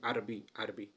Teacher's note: جو اس کا رسم الخط ہے وہ العربی ہے، یعنی را مفتوح ہے. عام طور پہ ہم بولتے ہیں عربی عربی، یعنی را کو جو ہے وہ ہم سکون کے ساتھ پڑھتے ہیں